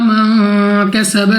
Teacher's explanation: نون ساکن کے بعد کاف ہمارے پاس یہاں پہ اخفا میں سے ہے، غنہ کر کے پڑھا جائے گا